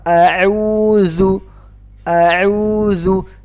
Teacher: Makhraj zal adalah di ujung lidah keluar di antara ujung gigi seri.